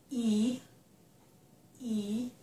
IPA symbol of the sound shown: i